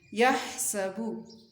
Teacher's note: ہا کی آواز حلق سے نکلے گی، سین کی آواز باریک سیٹی والی ہوگی